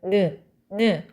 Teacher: 입안의 통로를 막았다가 코로 공기를 내보내면서 내는 소리. 여러분 코로 공기를 내보내면서 내는 소리이기 때문에 비음이에요.